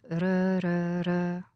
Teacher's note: This is the sound of D or T when it happens between 2 vowel sounds.